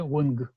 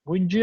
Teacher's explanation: /г/ перед /ы/ переходит в /дж/ — это регулярный переход